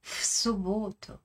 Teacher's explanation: En fait, je fais un léger souffle devant le mot субботу. В субботу, qui correspond grosso modo au son F.